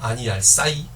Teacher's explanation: 이 모음이 뒤로 붙어가지고 네. 하향 이중 모음이기 때문에 아이로 읽어줬습니다.